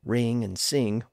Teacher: Single-syllable words like ring and sing were pronounced much like they are today, without a distinct hard G sound at the end.